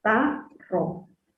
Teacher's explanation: En la ta sería la tónica, átona sería la ro. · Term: sílaba tónica